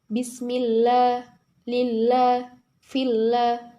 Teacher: ketika lam jalalah didahului kasrah cara membacanya yaitu tipis